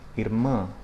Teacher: that final A is closed and nasalized